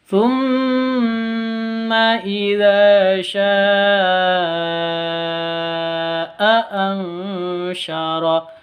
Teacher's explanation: Sya'a, ini panjangnya harus 5 ketuk. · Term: mad wajib muttasil